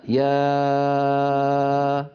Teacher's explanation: فإن هذه الألف ينشأ صوتها من الوترين الصوتيين من بداية السهم الأول الذي ترونه على اللوحة اليسرى.